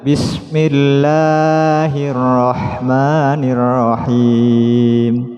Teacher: lamnya panjang, sedangkan ma sesuai satu ketukan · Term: panjang sebelah